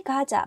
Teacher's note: 기역 is the sound between K and G. Sometimes you hear K and sometimes you hear G.